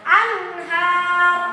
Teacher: Nah anhar karena ro-nya disukunkan sebelumnya berharokat fathah, tebal juga. Ya, ketika sukun dan ketika doma kalau wasol dia tebal. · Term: ro tafkhim